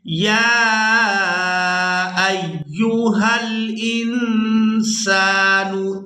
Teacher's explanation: یہاں نون ساکن پر اخفا کیا جائے گا، آواز ناک میں جائے گی اور اس آواز کو کچھ دیر ناک میں روک کر رکھیں گے۔